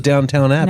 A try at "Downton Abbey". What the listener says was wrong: I don't think there's a second W in it.